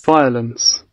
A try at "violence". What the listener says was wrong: Not Y, just like F, flower, and violence.